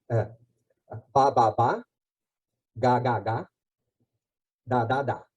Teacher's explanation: da é o ponto de articulação intermediário entre o bilabial ba e o velar ga. Quanto mais para trás, mais difícil de ler orofacialmente.